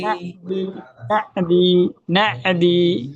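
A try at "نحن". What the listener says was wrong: নাহনা, এটা না, এটা না, না। হাটা গম্ভীর ভাবে বলেন, না।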